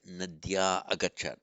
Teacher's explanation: the long a followed by visarga, followed by a vowel. Nadyah agachat. Drop the visarga.